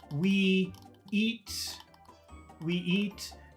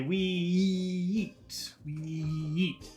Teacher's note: Now, it ends with a vowel sound, and eat starts with a vowel sound. So you put a big E in the middle. We eat. You have to put like a new sound in there to separate the two words.